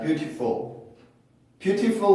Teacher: 그게 발음표상으로 보면은 모음 사이에 껴있는 1번의 규칙과 T가 음절을 갖고는 있지만 강세를 갖고 있지 않은 플랩의 발음을 해줄 수 있는 위치를 만족을 하고 있어요